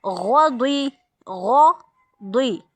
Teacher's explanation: اب یہ دیکھیں، غین موٹا، ضاد موٹا، با بریک۔